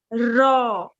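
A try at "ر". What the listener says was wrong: Raw. Beautiful.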